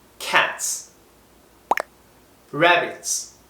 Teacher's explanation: 트와 스 소리가 이 압축된 츠 소리로 발음해 cats, rabbits로 발음한다는 거.